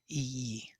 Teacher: ee being narrowed because the tongue is pushing to the hard palate